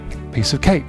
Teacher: cake is a k sound that's going to disappear